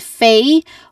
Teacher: It starts with fei, which has a clear a diphthong sound.